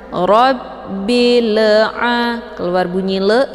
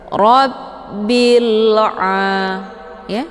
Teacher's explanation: Bil'a dengan cara ditekan, dan lam ini bunyinya tipis ya. Dan jangan dibaca pantul. Rabbil'a, keluar bunyi le, itu bacaan yang salah.